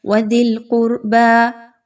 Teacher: دال کے مخرج پر خاص توجہ دینی ہے، زا کی طرح سختی سے نہیں پڑھنا، نرمی سے پڑھنا ہے۔